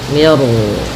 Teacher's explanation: di sini mi-nya tipis, ro-nya tebal. Nah, di sini namanya ro tafkhim.